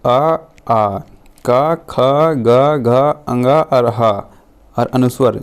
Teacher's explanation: ये 8 वर्णों का उच्चारण हम कंठ से करते हैं दोस्तों